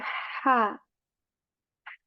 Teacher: The first letter here is ha letter from the middle portion of our throat, and we say ha.